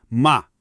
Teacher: assim reto e contínuo, significa mãe.